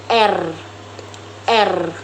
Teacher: menghasilkan suara yang getar atau disebut getar alveolar